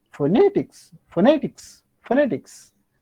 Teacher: among these three syllables you have to stress on second syllable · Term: stress mark